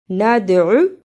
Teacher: دال جزم کی صورت میں حرف قلقلہ ہے، یعنی اس لفظ کو ہلا کر پڑھنا ہے